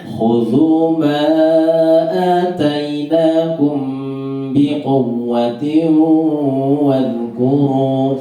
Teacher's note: quwwa itu cukup 2 ketukan. Quwwa wawunya ditasydid.